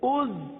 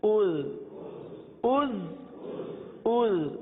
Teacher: زا میں تو سیٹی کی آواز آئے گی، زال میں نرمی ہوگی